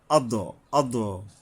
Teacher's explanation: দালের উপরে কলকলা করতে হবে। দালের উপরে সাকি জজম আছে।